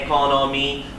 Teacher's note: a lot of Indonesians say economy because Indonesian like a lot of Asian languages everything gets the same tone every syllable